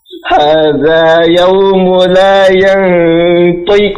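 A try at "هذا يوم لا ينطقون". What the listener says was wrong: Baik, qafnya tebalkan sedikit ya. Yantiqu.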